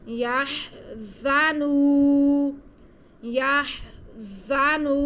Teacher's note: یا آگے زا پہ زبر ہے، نون پہ پیش اور واو ساکن ہے، تو نون پہ پیش اور واو ساکن ہونے کی وجہ سے واو مدہ ہے، ہم واو نون کو کھینچ کے پڑھیں گے